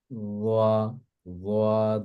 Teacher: জিহ্বার মাথাটা সামনে দুই দাঁতের মাথার সাথে লাগিয়ে সফট করে